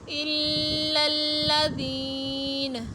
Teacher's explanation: اگر وقف کریں گے تو پڑھیں گے الا الذین، نون کو ساکن کر دیں گے